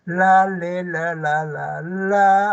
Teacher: ¿Por qué se llaman alveolares? Porque la puntita de tu lengua, que es el ápice, va a subir a cada alveolos, ¿ve? Detrás de los dientes superiores.